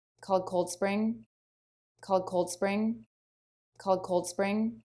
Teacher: here we have an ED ending, and the word before ends in the L consonant, so it just adds the D sound.